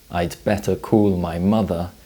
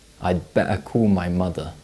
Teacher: significant T glottalization, which means the air is stopped in the throat when the t sound appears at the end of words or between vowels.